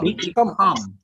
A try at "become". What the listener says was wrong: Become. Yeah, don't stress so much. Become. That's it.